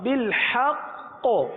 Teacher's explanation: وقف میں قلقلہ مشدد ادا ہوگا